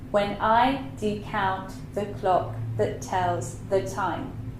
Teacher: That line is from one of Shakespeare's sonnets, and in there you can really, really clearly hear this iambic pentameter. Unstressed, stress, unstressed, stress, unstressed, stress, unstressed, stress, unstressed, stress.